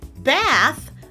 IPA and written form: bæθ (bath)